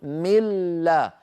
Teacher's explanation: يعني بدلا من أن نقول من لدنه فنرفع اللسان مرة للنون ومرة لللام، نقول من لا، فنرفع اللسان مرة واحدة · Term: الإدغام